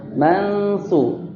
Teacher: Dibacanya kan dengung tuh, ada dengungnya. Mansu. Ya, antara n dan eng.